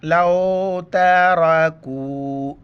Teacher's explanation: چھوٹی کاف ہے باریک کر کے پڑھنا ہے